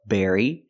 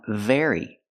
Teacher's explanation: They almost sound the same. The B makes a closed sound, berry, and the V makes a vibration sound, very. But the rest of the word is exactly the same.